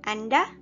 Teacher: Anda in the rising intonation at the end of a sentence can act similar to what about you in English.